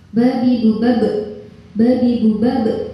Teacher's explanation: kalau membunyikan qalqalah itu kayak bunyi hamzah di belakang